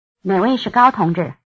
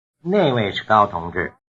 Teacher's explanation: The only difference between 哪位同志 which comrade and 那位同志 that comrade is the difference between a low tone and a falling tone.